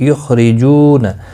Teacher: یخرجون، خواہ مستعلیہ ہے، را زیر کی وجہ سے باریک پڑھا جائے گا